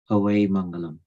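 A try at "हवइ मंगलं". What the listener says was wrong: Hoi Mangalam. Havai ni, Hoi Mangalam.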